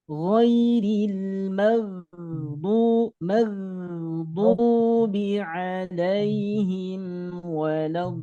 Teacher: huruf dod keluarnya dari sisi lidah dengan gigi geraham atas yang kiri atau yang kanan. Tapi biasanya kita menggunakan gigi geraham yang kiri.